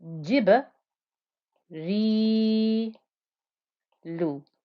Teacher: So don't forget, ba with sukoon gives you the qalqala. The ra with the kasra and the ya gave us the 2-count light stretch.